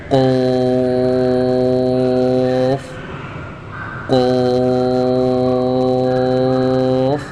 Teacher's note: قوف اور کاف کے مخارج جو ہے قریب ترین ہے۔ قوف ادا ہوتا ہے زبان کی جڑ اور تالوں کے نرم حصے سے